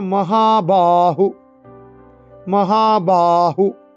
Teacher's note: মহাতের হাতে টান, বাতে টান